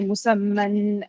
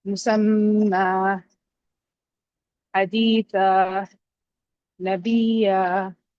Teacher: so it just becomes an alif, a long alif sound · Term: substitute med